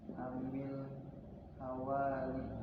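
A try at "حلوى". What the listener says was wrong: Halwa, bukan halawi, tapi halwa.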